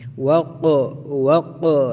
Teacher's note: قاف میں بھی قلقلہ ہوگا کیونکہ حروف قلقلہ کے 5 حروف میں سے قاف ساکن ہے